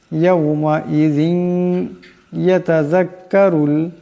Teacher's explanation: ওয়াজিআ ইয়াউমাইযিম বিজাহান্নাম ইয়াউমাইযিন ইয়াতাযাক্কারুল ইনসানু وأنى له الذكرى يومئذ এখানে জালের নিচে দুই জেরের তনবিন, এরপর ইয়া আসছে, এই জালের দুই জেরের তনবিন ইয়ার সাথে ঈদগাম হয়ে যাবে